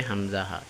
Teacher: আগে পড়ছি এখন এখানে লেখা আছে কণ্ঠনালীর শুরু হইতে উচ্চারিত হয় কন্ঠনালীর শুরু হইতে হামজাহা উচ্চারিত হয়